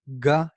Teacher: gah you hear vibration before touch